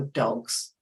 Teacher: plurals like dogs this changes to Z it's more of a z it's not a very strong but it's more than us so